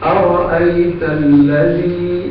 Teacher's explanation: الذی میں جو ذال ہے اس پر سیٹی نہیں آنی چاہیے. اس کو زا نہیں پڑھنا بلکہ زال پڑھنا ہے.